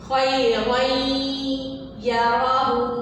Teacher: تو اسی طرح اگر ہم تنوین پڑھ رہے ہیں اور اس کے بعد حروف یرملون آ رہا ہے، تو وہاں بھی ہم نے تنوین میں جو نون کی آواز آتی ہے، جیسے خیرن، رن میں نون کی آواز آ رہی ہے، تو ہم اس نون کی آواز کو یا میں شامل کر دیں گے